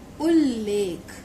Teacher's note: ता ला से मिलता है तो क्या होता है, ता खुद भी ला में बदल जाता है। जो दूसरे शब्द का ला है वर्ण, वो वैसा का वैसा रहेगा, लेकिन पहले शब्द में जो अंत में आधा ता आया है, व्यंजन आया है, ये ता व्यंजन ला व्यंजन में बदल जाएगा।